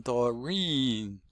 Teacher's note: Stress is on the second syllable, the second vowel.